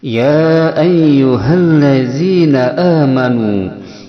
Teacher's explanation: Misah kalimah yang mana ya pada kalimah haraf nida, sedangkan ayyu itu hamzahnya pada kalimah isim, sehingga ada dua kalimah, yaitu mad bertemu hamzah berbeda kalimah, disebut dengan mad jaiz munfasil yang panjangnya 2 sampai 5 harokat